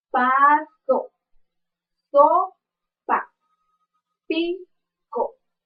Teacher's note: su modo de articulación es oclusivo y su punto de articulación es bilabial · ¿Por qué es sordo? Porque al hacer el sonido, nuestras cuerdas vocales no hacen ninguna vibración. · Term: la p